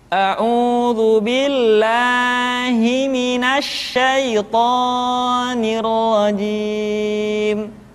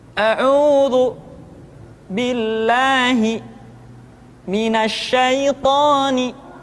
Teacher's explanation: Perhatikan kalimat toni. Secara hukum, toni harus dibaca dengan 2 harakat. Tapi seringkali kita ucapkan melebihi dari kadar 2 harakat. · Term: mad asli